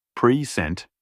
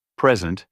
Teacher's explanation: stressing the second syllable in present, like present, can mean to introduce or give, while stressing the first syllable, present, typically refers to a gift